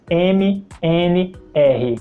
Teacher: das Letras m n r repetir algumas vezes e me e perceba que quando você faz esse sons é possível sentir as suas cordas vocais vibrando